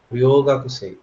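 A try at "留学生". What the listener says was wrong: ರ್ಯೋ ಅಲ್ಲ, ಯು ಇದೆ ನೋಡಿ. ರ್ಯೂಗಾಕ್ಸೆ.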